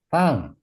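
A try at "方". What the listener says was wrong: Oh, nada 1, fang. sama nada 4. Fang. Iya, jadi belakangnya jangan naik ya. Boleh ikutin saya nada 1, fang. Nada 4, fang.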